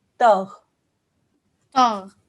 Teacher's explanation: ghain is not a qalqala letter, okay? So we don't do any sort of bounce.